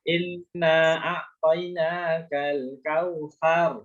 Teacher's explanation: Nah, jadi sarnya keluar udara. Tapi dalnya tidak.